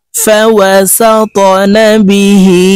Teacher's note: ত কলকলার হরফ উপরের দিকে ধাক্কা দিয়ে উচ্চারণ করতে হবে